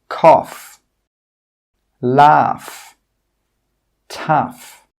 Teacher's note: In all of these words, that GH sound is pronounced as an F sound, as a /f/ sound.